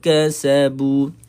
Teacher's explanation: ketika waqaf dibaca dengan dua harakat sahaja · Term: mad asli